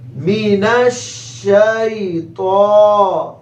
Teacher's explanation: میم کے نیچے زیر لمبا نہیں کریں گے، نون کو شین کے ساتھ ملائیں گے، شین کی آواز پورے منہ میں پھیلے گی، مینش مینش، اور شین کو یا سے ملائیں گے، یا لین ہے، نرمی سے ملانا ہے، جلدی سے پڑھنا ہے، شی مینش شی۔ تو موٹے حروف میں سے ہے، ایک الف کے برابر کھینچیں گے کیونکہ تو کے اوپر کھڑا زبر ہے، مینش شی تو۔